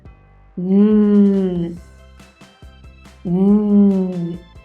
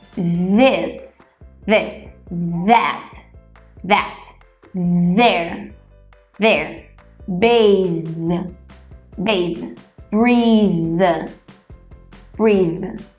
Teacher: E para o que chamamos de voiced, nós usamos as nossas cordas vocais para emitir um som que chamamos de vibration sound